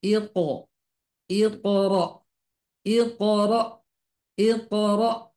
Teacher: Jadi suara pantulannya itu oh bukan e.